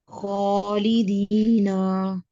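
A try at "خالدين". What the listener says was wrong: ना लंबा नहीं करें, ये हरकत है। एक खालिदीना।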